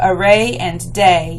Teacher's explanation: even though array is 2 syllables, it's the final stressed syllable that's rhyming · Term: masculine rhyme